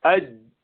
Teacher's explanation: آواز بالکل چل نہیں سکتی آگے، کیونکہ مخرج بند ہو گیا، اوپر لگا اور بند ہو گیا